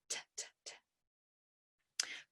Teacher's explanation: T and D are produced with the tip of our tongue up behind our teeth. The air is stopped at the tongue tip. Our voice is on for D and it's off for T.